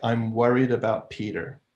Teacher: the M of I'm could be kind of narrow, where the corners of the lips are coming in, because you're about to go into the W of worried. So I'm worried, so that M mouth is kind of narrow because it's been infected by its neighbors, being infected by the tight, narrow W of worried.